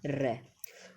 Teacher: ये कहलाते हैं प्रकंपी। प्रकंपी व्यंजन होता है जिसका उच्चारण करते हैं हम तो एक जिह्वा में कंपन सा पैदा हो